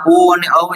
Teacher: ઉ અને ઔ જે છે એ કંઠ્ય અને હોઠ એટલે કે ગળું અને હોઠ દ્વારા ઉચ્ચારાતા સ્વરો છે